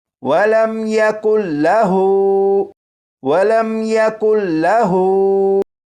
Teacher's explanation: یہاں پر ہا کو ایک الف کے برابر کھینچا کیونکہ ہا کے اوپر الٹا پیش ہے